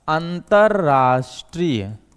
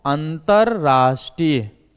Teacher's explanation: विसर्ग से पहले अ का स्वर है और विसर्ग के बाद जो होता है र आ रहा है, तो भी विसर्ग जो होता है दोस्तों किस में बदल जाएगा, आधे र में, यानी रेफ वाले र में बदल जाएगा और शब्द बनेगा अंतरराष्ट्रीय।